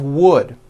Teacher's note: even though the word of is spelled with an F we pronounce the word of with a voiced V